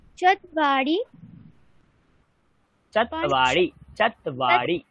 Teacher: ব যুক্ত আছে তয়ের সাথে মানে চাতওয়া চাতওয়া আচ্ছা এরকম বলো তকে হাফ উচ্চারণ করো তারপরে বা বলবে